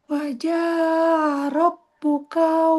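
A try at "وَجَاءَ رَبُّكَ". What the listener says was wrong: Wajah A. A-nya kurang jelas.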